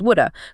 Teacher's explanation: the V sound often disappears completely, so should have becomes shoulda